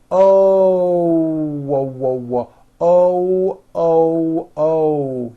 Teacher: when an american speaker makes an o we end the vowel with a small w sound watch this oh you notice how my lips are all the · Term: hidden w